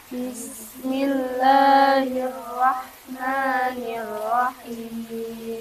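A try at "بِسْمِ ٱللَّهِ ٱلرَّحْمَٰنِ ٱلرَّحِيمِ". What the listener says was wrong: Ya, perlu diperhatikan ketika mengucapkan huruf ro, ini bibir kita tidak perlu bergerak berlebihan, tidak perlu mesusuk, nggak perlu Bismillahirrahmanirrahim, tapi cukup rahang kita saja yang bergerak. Perhatikan, Bismillahirrahmanirrahim. Jangan lupakan tasdimnya ro.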